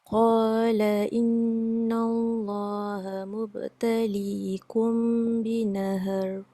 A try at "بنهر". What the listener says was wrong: Binahar, tebal. Kerana dia dah tebal tapi tak cukup tebal. Macam ni, baca tadi binahar. Binahar.